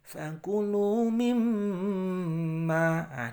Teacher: Di mim bertasydid jangan lupa untuk berdengung ya, untuk mendengung.